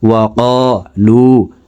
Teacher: ওয়া লু, পেশের বাম পাশে জজমালা ওয়া মদের হারফ, ডান দিকের হারকতকে এক আলিফ টানিয়া পড়িতে হয়। তো এই পেশওয়ালা লামটি জজমালা ওয়ার সাথে ঠোঁট গোল করে এক আলিফ টানে পড়ব